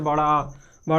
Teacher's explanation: बड़ा आ बोलने में सबसे ज़्यादा मुख खुलता है, इसलिए ये होता है विव्रत स्वर